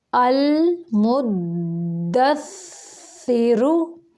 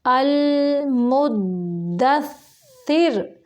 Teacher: یہ رو ملانے کی صورت میں پر پڑھیں گے اور وقف کی صورت میں المدثر، را باریک پڑھیں گے